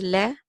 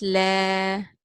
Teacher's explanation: So la, okay, and you receive the timing of two vowel counts. So one fatha has la, but with an alif it's la, two counts of the vowel.